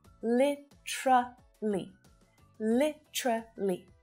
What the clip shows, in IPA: 'li t∫rə li